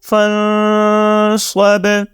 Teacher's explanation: جیسے آپ نوٹس کریں کہ یہاں جب ہم نون کو اس سے پچھلے لفظ سے جوائن کریں گے تو نون کی آواز غنہ کی طرح ہم اپنے ناک سے نکالیں گے، اور اس آواز کو 1 سیکنڈ کے لیے ہم تقریباً اپنے ناک میں روک کے رکھ کے پڑھیں گے · صاد کو ہم نے موٹی آواز کے ساتھ پڑھا، با حروف قلقلہ ہے، ٹھیک ہے، اس کے اوپر جزم، تو ہم نے با کے اوپر قلقلہ بھی کیا